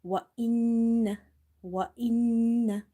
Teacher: You will hold the noon sound because there is a ghunna or nasalization in this noon. So whenever you see there is a shadda sign on top of noon, you will do nasalization.